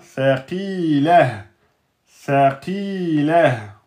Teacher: Donc, qi, on a une lettre emphatique, ensuite avec une prolongation de temps. Et on a le ta marbota qui à l'arrêt donc devient saqilah, saqilah.